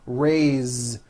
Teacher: Now this word is a bit unusual because even though it is spelled with an s, it's pronounced with a voiced Z.